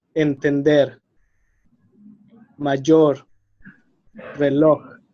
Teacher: So the stress is in the last syllable.